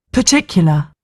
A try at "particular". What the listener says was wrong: She don't she don't pronounce the R, the first R, too.